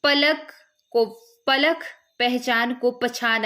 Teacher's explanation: कहीं कहीं अल्पप्राण ध्वनियों का महाप्राणीकरण भी होता है,